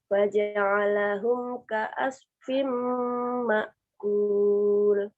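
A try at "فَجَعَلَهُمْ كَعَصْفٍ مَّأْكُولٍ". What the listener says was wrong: Ainnya kurang dalam. Baca.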